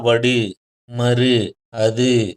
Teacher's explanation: வல்லின உகரங்கள் வந்து ஓசை குறையாமல் ஒலிக்கும் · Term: முற்றியல் உகரம்